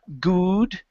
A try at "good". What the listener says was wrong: Open your lips a little bit more.